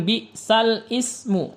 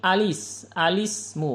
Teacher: Huruf lamnya yang berharokah menjadi bi'salismu. Jadi kalau diberikan alif lam lafaz ismu menjadi alismu, bukan al-ismu.